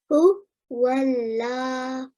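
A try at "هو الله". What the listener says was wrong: Right, round on your mouth a little bit more. Hu Wallah. So everywhere where you see a red letter, you need to make a nice thick round mouth, right?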